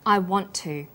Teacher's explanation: The final t sound in want is held slightly longer on the tongue. Then to is pronounced. The t sound is pronounced only once. I want to. This type of linking is called consonant plus same consonant linking.